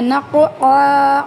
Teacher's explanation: قاف پہ قلقلہ کرنا ہے